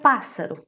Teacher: Em relação a pássaro, que é a última palavra que aqui está, nós podemos ver que tem 3 sílabas, ou seja, é um trissílabo, lá está, tri quer dizer 3, a sílaba tónica está na antepenúltima, ou seja, terceira a contar do fim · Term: palavra esdrúxula